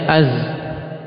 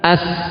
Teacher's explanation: adanya aliran suara yang keluar di antara taraful lisan dan sanaya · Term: safir